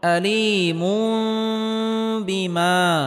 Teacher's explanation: আযাবুন তানবিনের পরে ইকলাবের হরফ বা আসার কারণে এখানে ইকলাব গুন্নাহ করে পড়তে হবে, অর্থাৎ তানবিনকে ছোট মিম দ্বারা পরিবর্তন করে পড়তে হবে।